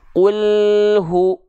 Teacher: langsung masuk ketika alnya sudah tuntas jangan sampai lidahnya turun KL ketika turun Qul sedangkan hunnya belum dilafalkan jadilah ada bunyi pantulan di sana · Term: lam sukun